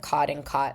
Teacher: the lowback merger. So like cod and cot sound the same.